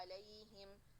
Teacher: کوئی بھی شدہ اور جہر نہیں ہے, تو اس کو نارمل پڑھنا ہے علیہم, جس میں یا لین کو 2 کاؤنٹ سے کم. یہاں یا لین آ رہا ہے 2 کاؤنٹ سے کم. 2 کاؤنٹ سے کم کا مطلب یہ نہیں ہے کہ نہیں, علیہم جلدی سے پڑھنا ہے.